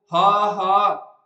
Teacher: ਪਰ ਜਦੋਂ ਆਪਾਂ ਇਹਨੂੰ ਉਚਾਰਦੇ ਹਾਂ ਤਾਂ ਜਿਹੜੀ ਹਵਾ ਹੁੰਦੀ ਹੈ ਉਹ ਰੁਕਦੀ ਵੀ ਨਹੀਂ ਹੈਗੀ, ਤੇ ਪਰ ਉਹਦਾ ਪ੍ਰਵਾਹ ਵੀ ਕਾਇਮ ਨਹੀਂ ਰਹਿੰਦਾ। ਪ੍ਰਵਾਹ ਦਾ ਮਤਲਬ ਕਿ ਉਹਦਾ ਜਿਹੜਾ ਫਲੋ ਹੈਗਾ ਉਹ ਵੀ ਕਾਇਮ ਨਹੀਂ ਰਹਿੰਦਾ ਹੈਗਾ, ਇੱਕ ਵਾਰੀ ਰੁਕ ਕੇ ਫੇਰ ਨਿਕਲਦੀ ਹੈ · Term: ਸੁਰਯੰਤਰੀ, ਸੁਰ ਯੰਤਰੀ